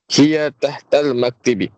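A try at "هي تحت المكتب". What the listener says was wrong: Iya tahtal maktabi. Ya, jadi ini dibacanya maktab ya Pak. Dari maktab dengan menfathahkan mim maktab.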